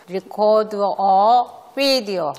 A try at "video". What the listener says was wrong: 비디오는 약간 비 발음 냈지만 V를 하려면 video. 비디오. 네, 비디오 하려면 이런 식으로 비디오. 입술이 너무 만나고 싶어서. 비디오.